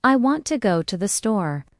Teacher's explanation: The stress is on want and store. The words to and the are much softer. This creates the rhythm of English.